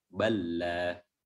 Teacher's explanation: huruf lamnya yang pertama tidak dianggap dan dimasukkan langsung ke huruf lam, sehingga huruf lam yang kedua tasydid, ya, karena ada 2 lam di lam kedua, jadi dia bertasydid. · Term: idgham mutamathilain